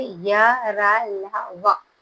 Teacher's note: जिन व्यंजनों के उच्चारण करते समय जीभ मुख के किसी भी भाग को स्पर्श नहीं करती, उन्हें अंतस्थ व्यंजन कहते हैं।